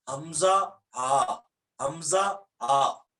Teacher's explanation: جو اقصی حلق ہے، سب سے اینڈ سے جو حصہ سینے کے قریب ہے، وہاں سے 2 حرف ہیں، حمزہ اور ہا. حمزہ ہا، یہ یہاں سینے کے قریب جو گلے کا حصہ ہے، اقصی حلق.